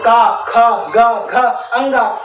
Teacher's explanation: का ख ग घ अंगा हमारे कंठ वर्ण कहलाते हैं